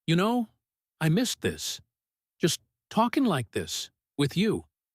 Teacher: Don't rush. Let missed carry a small, honest stretch, and let the whole sentence fall gently, the way sincere, quiet confessions usually do in English, completely different from loud excitement or sharp sarcasm. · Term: soft, sincere tone